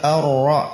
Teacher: ra-nya tebal ya, dan getarannya itu cuma satu getaran